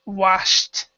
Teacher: so in this respect we actually pronounce we actually say h do not pronounce the E and this is a t sound